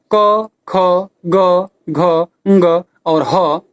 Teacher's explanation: प्रथम कंठ वर्ण, जिसका उच्चारण स्थान कंठ है